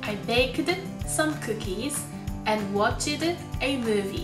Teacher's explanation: 無声音で終わる▁bake、watch▁の動詞の後に有声音である▁d▁をくっつけていたんですね